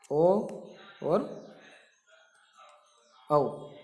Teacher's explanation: ओकार और औकार का उच्चारण स्थान कंठ तालु है। ओ और औ इनका उच्चारण स्थान जो है कंठोष्टम है, कंठ और ओष्ठ।